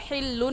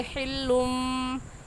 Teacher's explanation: नून साकिन या तनवीन के बाद बा आ जाए तो वो दोनों मीम बन जाते हैं और उन पर गुन्ना भी होता है